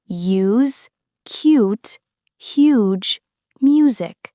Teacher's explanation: This sound is a smooth sequence of /j/ + /uː/, moving from the /j/ glide into the long /uː/ to create the “yoo” sound. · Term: The /ju/ Sound, U sound